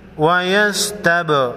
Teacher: با ساکن کو ہلا کر پڑھیں گے